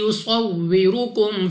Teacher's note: را کے اوپر پیش تو را کو بھی پر یعنی موٹا پڑھیں گے